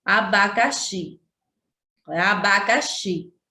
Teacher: Que é abacaxi, x, xi é a que a gente pronuncia com mais ênfase, com mais forte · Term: sílaba tônica